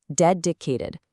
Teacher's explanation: Stress is right on the first syllable.